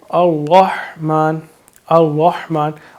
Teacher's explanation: میم کے اوپر کھری زبر ہے، اس کو ہم تھوڑا لمبا کریں گے لیکن حرکات کو لمبا نہیں کریں گے، نون کے نیچے زیر ہے۔